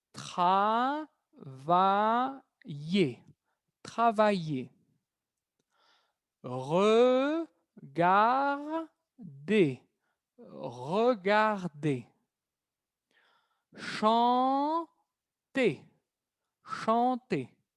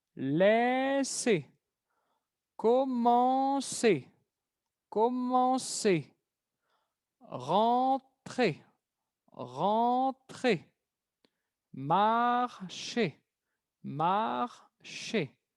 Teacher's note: Observan que al final siempre va a ser el sonido E. Siempre el sonido E. No R.